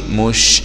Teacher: شين سكون مع التفشي